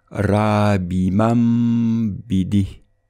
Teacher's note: le noun avec soukoun sera remplacé par un mim avec un soukoun, et il sera prononcé avec un nasillement de 2 temps. Dans cet exemple, on prononcera rabimam bidi.